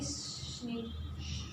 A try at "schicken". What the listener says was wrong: There is no N.